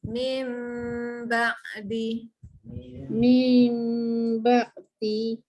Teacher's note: Hilangkan bunyi min tu tak nak. Tak nak bunyi en pun langsung. Masuk terus bunyi mim.